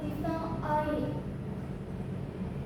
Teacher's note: O letaknya di posisi tengah ke belakang. Bibit agak membulat dan I.